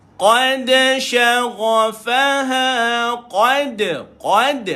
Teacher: naik lidah pada qa dan ada Qalqalah pada da